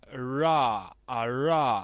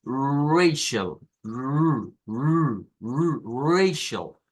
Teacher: Es la que se conoce como R aproximante. Y notarán ustedes que el símbolo que se utiliza es parecido a la R suave, a la R fuerte, perdón, del español, pero de cabeza.